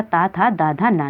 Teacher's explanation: ता वर्ग आता है दंत से बोलते हैं